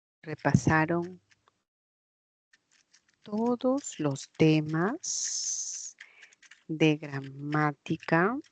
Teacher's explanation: Esa es una pregunta que tiene la inflexión ascendente.